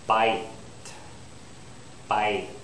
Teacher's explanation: my lips are spread for the Y